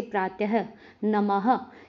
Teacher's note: विसर्ग का उच्चारण हल्के ह की भांति प्रतीत होता है, यह भी अनुस्वार की भांति स्वरों के बाद आता है।